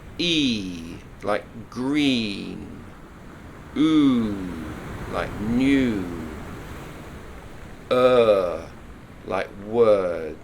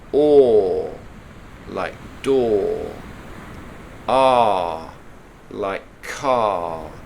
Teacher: They're very, very long sounds. They're much longer than you probably think.